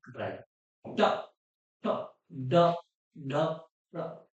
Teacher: जीव का अंतिम किनारा ऊपर जाके तालू से टकराएगा जीव ऐसे मुड़ के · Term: मुर्दा